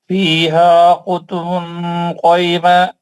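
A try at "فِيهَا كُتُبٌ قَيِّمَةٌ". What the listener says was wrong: قیمہ کیسا پڑھیں گے؟ قیمہ. فیہا کتب اخفا کا غنہ کریے نا، اخفا میں غنہ ہوتا نا. فیہا کتب قیمہ. خی تجدید والے کو قیمہ.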